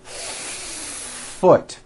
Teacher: Do you see how long I am holding that F? Now I know that's a little bit exaggerated, but you get the idea. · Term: air friction